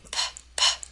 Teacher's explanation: if you place your hand over your voice box uh there's no vibration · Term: voiceless